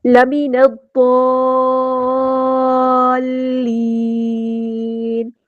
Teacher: ضاد ہمارا ہیویٹر ہے، پورا ادا کریں گے. مد آئی ہے، اس کو ہم نے 6 کاؤنٹ لمبا کرنا ہے، یہ مد لازم ہے، اور اس کی جو شد ہے اس کو ٹھیک سے پڑھنا ہے. · نون کو ہم نے ضاد کے ساتھ ملا دینا، حمزۃ الوصل ڈراپ ہو جائے گا، لام یہاں پر لامی شمسیہ، اس کو ظاہر نہیں کرنا.